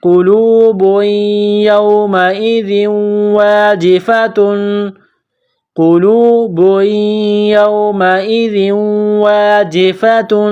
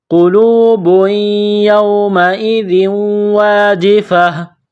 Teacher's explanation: ہے، تا 2 پیش تن، قلوب یومئذ واجفۃ، قلوب یومئذ واجفۃ۔ جب وقف کریں گے، سٹاپ کریں گے تو گول تا کو ہا سے تبدیل کریں گے